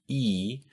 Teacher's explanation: your tongue is all the way up and in the front of your mouth